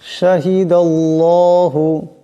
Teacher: আল্লাহর লামের ডানে জবর আছে আল্লাহর লামকে মোটা আওয়াজে পড়তে হবে